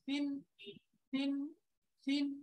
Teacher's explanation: এই যে তিন উচ্চারণটা খেয়াল করেন, তিন তিন তিন নরম করে জিব্বার আগা, উপরের দাঁতের আগা